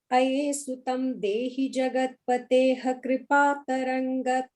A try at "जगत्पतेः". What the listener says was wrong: And the jagat pateh, right, is just a ich, right, not a ha. I think you're saying pateh, you're adding one extra syllable there, one half syllable.